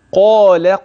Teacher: القاف تفخم في اعلى مراتبها والالف بعدها تبع واللام ترقق